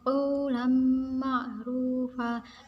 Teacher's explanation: ketika ada nun sukun bertemu dengan huruf wawu, karena huruf wawu ini adalah huruf miliknya idgham bigunah, maka cara membacanya dimasukkan dan disertai dengung.